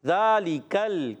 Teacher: زال پر کھڑا زبر ہے ایک الف کھینچنا ہے زال کا مخرج زبان کا سرا اوپر کے دانتوں کے کنارے